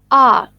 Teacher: This vowel is pronounced with a considerable separation of the jaws and the lips neutrally opened. A part of the tongue between the center and back is in the fully open position, no contact being made between the rims of the tongue and the upper molars. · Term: the most open vowel